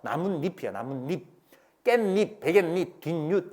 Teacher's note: 나무와 잎이 더해지면서 니은 소리 두 개가 덧나요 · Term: 니은 덧나기